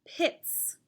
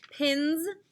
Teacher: look at the letter before the s which is an n the letter n is voiced so this s will make the z sound which is the voiced s